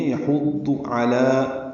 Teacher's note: یحض، یہ یحضو جو پڑھتے ہیں یہ غلط ہے، یحضو نہیں ہے، یحض علی، عین وسط حلق سے ادا کریں گے، لام کو 2 حرکات لمبا کریں گے۔